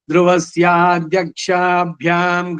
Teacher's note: ಅಧ್ಯಕ್ಷ ಅದು ಅಲ್ಪ ಪ್ರಾಣದಲ್ಲಿ ಬರ್ಬೇಕು